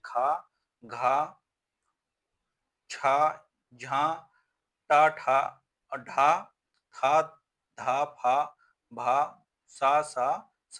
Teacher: प्रत्येक वर्ण का दूसरा और चौथा वर्ण तथा समस्त ऊष्म वर्ण महाप्राण है